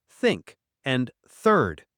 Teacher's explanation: Put your tongue between your teeth, blow gentle air, and voice no sound for think. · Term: th sound